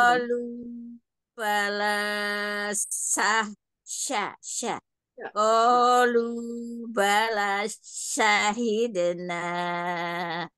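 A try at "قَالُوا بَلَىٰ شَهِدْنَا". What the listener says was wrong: Laknya jadi pendek, Bu. Jadi laknya harusnya dua harokat. Kolu, bala.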